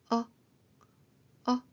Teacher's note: 아 하려다가 힘을 빼고 짧게 어 아할 입양에다가 힘을 빼고 짧게 어 해 볼까요? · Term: 사갓 발음